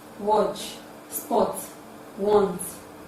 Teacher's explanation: this is produced at the back of the mouth with open and rounded lips it is relaxed because it requires less muscular strength therefore we can say into the back open relax rounded sound